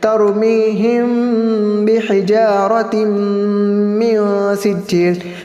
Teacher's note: ترمیہم بحجارہ، میم ساکن کے بعد حرف با ہے، وہاں پر میم ساکن کا اخفاء شفوی ہوگا اور دونوں ہونٹوں کو نرمی سے ملائیں گے، ایک الف کے برابر گننا بھی کریں گے